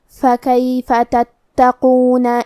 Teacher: کلمت تتقون میں حرف تا پہ تشدید ہے، لہذا ہمیں تا کو 2 حرف کے برابر پڑھنا ہے کیونکہ تشدید کی اصلیت 2 حرف ہے.